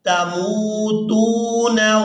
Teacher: یہاں میم کو واو مدہ کی وجہ سے اور تا کو بھی واو مدہ کی وجہ سے کھینچ کر ادا کیا جائے گا۔